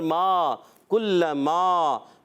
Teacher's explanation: الف مدہ ہے، ایک الف کھینچ کر ادا کیا